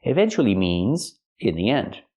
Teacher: we have to use a long e sound like green beans